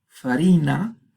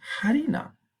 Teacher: la F inicial que se aspira, se convierte en H